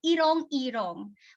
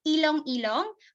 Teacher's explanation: Chinese traders mispronounced R sounds with L sounds